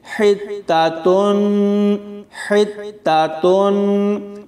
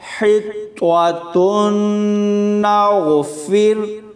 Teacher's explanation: بہت سارے لوگ اس کو پڑھتے ہوئے طا اور تا میں آواز کا فرق نہیں کرتے، وہ طا کو تا پڑھ دیتے ہیں، حتاتن، حتاتن، تو ایسے یہ لفظ غلط ہو جائے گا۔ طا کو پر پڑھیں گے اور تا کو باریک پڑھیں گے